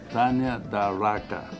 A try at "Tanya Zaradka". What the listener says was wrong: With a Z. Zaradka.